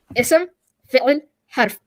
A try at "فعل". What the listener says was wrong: You almost died saying fi'l. You're like اسم fi'l. Relax. Fi'l.